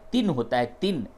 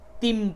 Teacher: چونکہ آگے با آ رہا ہے تو اس کو تن نہیں بلکہ تم پڑھیں گے، اور میم بھی بنا دیا گیا ہے، یہ لمبی میم۔ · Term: قلب